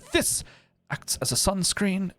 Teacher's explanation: off he's emphasizing the this so This acts as a sunscreen so this and sunscreen are emphasized